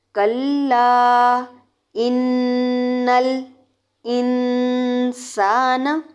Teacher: کلا ان الانسان، نون تشدید والا ہو تو وہاں پر غنہ ہوگا. غنہ کرنے کے بعد جب ہم لام کے ساتھ ملائیں گے تو نل نہیں کریں گے